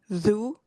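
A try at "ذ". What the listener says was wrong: Zu. Very good. Ahsanti.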